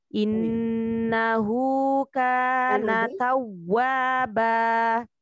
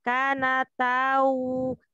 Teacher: Innahu kana tawwaba. Jadi dimonyongkan mulutnya. Ketika waw bertasdid itu ada penekanannya.